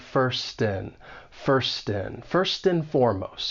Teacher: the word and is going to get reduced to just n and this is quite common in spoken English